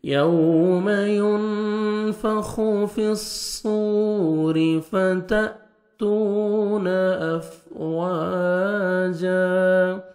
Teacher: یوم واو لین ہے، نرمی سے ادا کریں گے، نوز میں ساؤنڈ نہیں لے کے جانا، یوم نہیں پڑھنا.